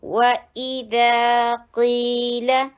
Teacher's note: 7 یا 6 ایسے حروف ہیں جو ہمیشہ ہیوی کیے جاتے ہیں. تو اس میں قاف آ رہا ہے تو قیل ہیوی کیا جائے گا